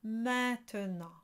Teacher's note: So A-I-N is an A sound. So think again, an A that you nasalized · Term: nasalized A sound